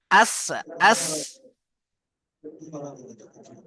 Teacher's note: বিসমিল্লাহির রহমানির রহিম ওয়াল্লাইলি ইযা আশ হ্যাঁ, আশ, আশ নয়, এটা সিন হয়ে যাচ্ছে, আপনার সিন পড়তে হবে, সিটি মতো আওয়াজ আসবে। প্রেসার কুকারের যে সিটি আসে জানেন, আওয়াজ করে, সিটি মতো আওয়াজ হবে।